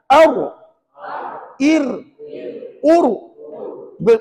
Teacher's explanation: Ar Ir ur tadi ada getaran yang berlaku pada dia rupa-rupanya huruf ra ni ada satu sifat yang dinamakan sebagai takr iaitu bergetar ataupun berulang-ulang